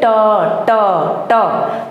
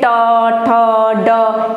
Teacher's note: जब आप ट बोलेंगे तो तालु के जो आगे वाली जगह होती है, आगे साइड में, वहाँ होता है मूर्धा